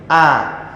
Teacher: Sambil membuka Huruf hamzah keluar dari pangkal tenggorokan